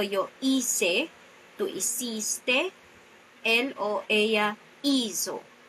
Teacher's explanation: Here, hacer takes the different preterite tense, and as you can see, or if you're going to pronounce these words, the second to the last syllable is the stressed part of the word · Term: strong preterite